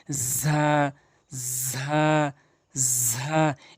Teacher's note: ঝা হরফটি এক আলিফ টান দিবেন প্লাস এখানে জিহ্বার আগা উপরে নিচে ২ দাঁতের মাঝখান থেকে উচ্চারণ করবেন। · আবারও বলছি, জিহ্বার আগাটি নিয়ে উপরের নিচে ২ দাঁতের আগাতে লাগাবেন। উভয় দাঁত বন্ধ করার পর যে মাঝখানটি তৈরি হয়, যে আগাটি হয় উভয় দাঁতের আগা, এই ঝা হরফটি উচ্চারণ করতে সেখানে লাগাবেন এবং এক আলিফ করে টেনে পড়বেন ঝা, ঝা, ঝা।